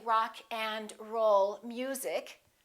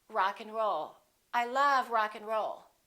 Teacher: in this case we reduce the a and the D those disappear often